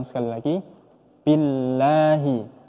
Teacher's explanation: Dalam kalimat billahi, kalimat Allah ini kita baca tipis, bukan billah, billahi, tapi billahi.